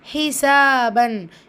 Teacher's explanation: இங்கே சீனில் அலிஃப் மதா இருக்குது, 2 ஹரக்கத்தளவு நீட்டம் கொடுங்க